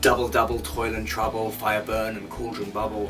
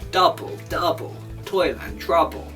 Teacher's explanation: that's a fairly regular rhythm called trochaic tetrameter tetra meaning four so a meter of four beats